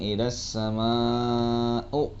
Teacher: Nah, di sini ada sama'u, yaitu ada mat wajib muttasil. Ya, hukum bacanya harus dibaca 5 harokat. Jadi dibaca panjang